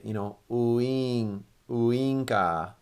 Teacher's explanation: it's not a W, it's more of like the vowel oo and then e, ooing, ooinka.